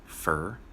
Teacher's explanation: For often gets reduced to fur.